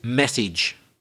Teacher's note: The stress is always in the first syllable.